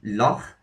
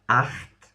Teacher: So this is a sound we don't have in English, or at least not in standard English. It's a h sound. So it's pronounced at the back of the throat.